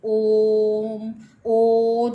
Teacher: प्लुत स्वर, जब इनको बोलने में हमें 3 गुना समय लगता है, जैसे ओम, ओ जो है वो प्लुत स्वर है।